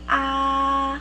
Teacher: it sounds like it's almost a monotone so just you have to keep your voice high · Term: level tone